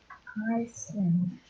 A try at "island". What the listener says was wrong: Okay, for that one, actually, it should be like silent S. So it's island, not Iceland. Island. That is how it is pronounced. Island.